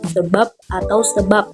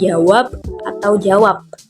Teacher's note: kedua direalisasikan sebagai bunyi b atau P apabila berposisi sebagai Koda pada sebuah silabel